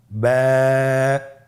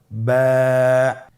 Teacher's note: এর মাখরাজ হলো আপনার 2 ঠোঁটের বিজা অংশ থেকে আপনি উচ্চারণ করবেন · বা হরফে টান হবে, এক আলিফ টান